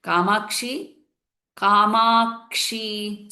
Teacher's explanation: So here that rule, the new rule that we started following from last two classes, which is the Dirgham followed by Sanyuktakshara. Then there is a little holding or stress on the Sanyuktakshara, and the Dirgham becomes little longer.